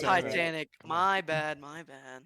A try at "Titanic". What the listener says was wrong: Titanic, not Thigh Titanic.